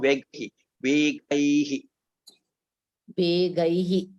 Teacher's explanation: that gai should be slightly elongated because it is a swara dirgha